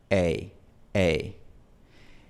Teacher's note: el movimiento de la lengua es tan pequeño que a veces deja de ser un diptongo y se convierte en una sola vocal. Así que no es un diptongo muy obvio.